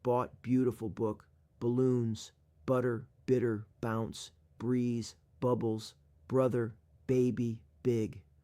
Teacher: Similar to bat, when saying book, bring your lips together to pronounce the B sound. Remember to release a burst of air and let your vocal cords vibrate while saying the B sound in book. Practice saying book multiple times, paying attention to how you articulate the B sound at the beginning of the word.